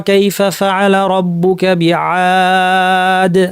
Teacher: আদ কেন টানতে পারলাম এত লম্বা করে? তার কারণ হচ্ছে আলিফের পরে দালের উপর সুকুন দিয়েছি, সুকুনটা অস্থায়ী সুকুন। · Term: মাদ আরিদ